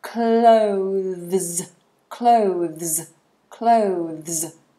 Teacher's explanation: we have the th so the tongue is between the teeth and this becomes a zed sound